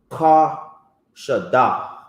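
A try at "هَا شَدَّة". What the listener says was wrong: No, it's a Ha.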